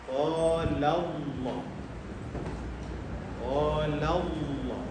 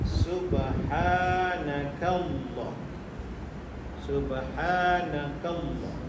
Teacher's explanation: Contoh, qalallah, sebelum lafaz Allah ada huruf yang berbaris di atas, maka dibaca dengan taghlidh tebal seluruh ruangan mulut, sebutan penuh dalam ruangan mulut dengan mengangkat lidah ke langit-langit